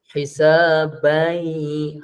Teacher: Asalnya ban, masuk pada ya dia jadi dengung.